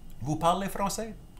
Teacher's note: you would say like a basic statement with the rising intonation